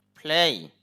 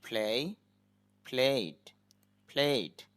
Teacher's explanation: প্লেই, এখানে প সাউন্ডটাই ফর মতো হবে, দুই ঠোঁট একত্র করে বলতে হবে, তখন একটু বাতাস বের হবে।